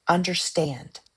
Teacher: Anapestic, unstressed unstressed stressed.